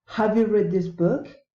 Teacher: general question rising intonation